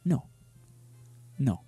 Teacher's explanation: in languages such as Spanish or Japanese this sound is what they call clipped because it's just like in one take it's just no in